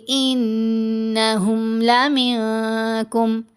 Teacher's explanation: انہم نون پر غنہ کریں گے